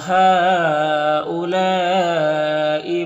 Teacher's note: مد متصل ہے کیونکہ حرف مد الف کے بعد حمزہ اسی کلمہ میں ہے